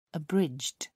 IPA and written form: əˈbrɪdʒd (abridged)